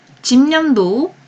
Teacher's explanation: 집념도 비음화가 일어나지만 뒤 음절의 초성인 니은의 영향을 받아서 앞 음절의 종성 비읍이 미음으로 교체가 됐어요.